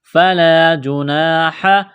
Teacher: را کو موٹا کرنا ہے زبر کی وجہ سے، فلا جناح، الف سے پہلے زبر ہے، ایک الف کے برابر کھینچنا ہے